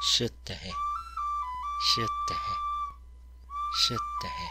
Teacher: This sound is between the S and the SH, between S and sh, sh, shittehe.